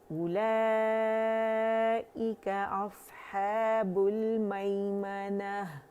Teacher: اور یہ واو جو ہے پڑھی جانے والی نہیں ہے، یہ پرماننٹ حرف علت ہے، ٹھیک ہے. تو ہم حمزہ دمہ او پڑھیں گے، کھینچیں گے نہیں، او کر کے نہیں پڑھیں گے، ٹھیک ہے. · مد متصل واجب 4 to 5 کاؤنٹس کھینچیں گے